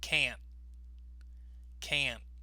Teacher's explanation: we stress the word can't, but notice we don't often pronounce the T. · we often stop on the T. But what happens is the N sound becomes stronger to hear.